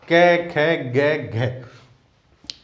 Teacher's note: देखो हमने भी यहां पे क्या लिखा हुआ है, कंठ ही लिखा हुआ है। इन सब का उच्चारण स्थान कंठ से होता है। इन ध्वनियों को बोला जाता है कंठ्य ध्वनि।